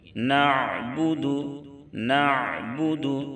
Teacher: عین کی ادائیگی میں آواز اچانک سے رک نہیں جانی چاہیے، ورنہ عین حمزہ سے بدل جائے گا، آواز تھوڑی تھوڑی جاری رہے گی۔